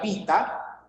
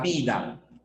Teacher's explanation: Los sordos, P, T, K, se transforman a sonoros en B, D y G. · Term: sonorización